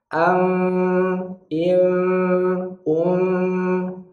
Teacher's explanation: Jangan berikan makhrajnya secara sempurna. Jadi bibirnya itu tidak menempel, ada sedikit jarak, mungkin sekitar selembar kertas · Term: menyamarkan mim